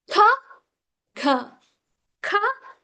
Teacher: when you say k, the back of the tongue touches your soft palate. So soft palate, that is called velar sounds.